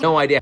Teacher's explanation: if you were listening carefully you heard a little uh sound in between no and idea so instead of saying no idea people actually connected to which